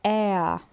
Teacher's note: É a não tem necessidade de falar é a r aquele r que vem lá do fundo da garganta, porque os alemães não costumam falar dessa forma, tá? É um a, é um r bem fraquinho mesmo.